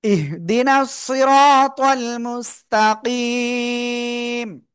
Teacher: তো আমরা এখানে যদি থেমে যাই, খাড়া জবর নাই, মদের হরফ নাই, গোলতা বাদে দুই জবর নাই, তাই সাকিন দিয়ে পড়বো। এক আলিফ মদের পরের হরফে আমরা থেমে যাচ্ছি, তাই সাকিন হচ্ছে, এই জন্য আমরা এখানে এক আলিফের জায়গায় তিন আলিফ টেনে পড়বো।